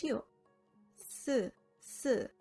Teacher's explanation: the small opening in between your teeth and tongue creates the sound by causing friction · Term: fricative consonant